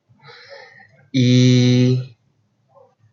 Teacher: So for the height of this vowel sound, it is high. For the advancement, it's a front. And the lip rounding is unrounded and tense. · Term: long E sound